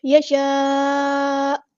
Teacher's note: حمزہ کا جھٹکا واضح کرنا ہے، حمزہ کو سکپ بالکل ختم نہیں کرنا